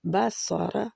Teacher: فرجیل بصرہ، بصرہ، با کو باریک پڑھتے ہوئے صاد اور را دونوں ہی موٹے رہیں گے۔ را بھی موٹی ہوتی ہے، جب زبر اور پیش کے ساتھ آئے تو را موٹی ہے۔